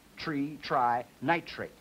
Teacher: The R has that friction noise on it, that voicelessness. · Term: normal transition